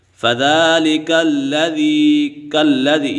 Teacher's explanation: فَذَلِكَ الَّذِي، یہاں پر ذال کے اوپر کھڑا زبر ہے کیونکہ کھڑا زبر حروف مدہ کا قائم مقام ہے تو کھڑی حرکات کو حروف مدہ کی طرح ایک الف یعنی دو حرکات کے برابر کھینچ کر پڑھیں گے